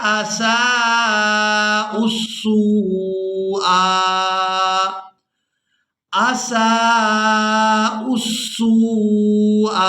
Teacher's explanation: اب یہاں پر ہم نے حمزہ کو سین مشدد کے ساتھ ملانا ہے، اس کے بعد سین کو واو ساکن کے ساتھ ملائیں گے اور کھینچ کر ادا کریں گے